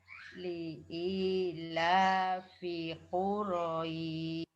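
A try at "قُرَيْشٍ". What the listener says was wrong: Sinnya nggak nampak. Sin bertitiknya nggak nampak. Ya, Quraisy. Quraisy. Ya, jenengan belum pas di shinnya bertitik ini.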